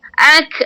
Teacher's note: Sebab dia huruf nipis. Ak, dia ada hamas, suara yang terlepas.